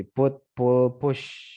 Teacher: Kemudian ini close back vowel seperti put, pull, push.